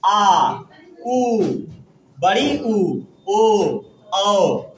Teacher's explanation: पश्च स्वर मतलब जीव का पीछे वाला भाग ना, जीव का पश्च मतलब पीछे वाला होता है। और पश्च वैसा स्वर जिसका उच्चारण करते समय जीव का पीछे वाला भाग अधिक क्रियाशील रहता है, उसे क्या कहते हैं, पश्च स्वर कहते हैं।